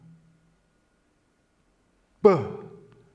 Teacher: wenn die Lippen sich schließen, B, entsteht das B, wenn die gestaute Luft entlassen wird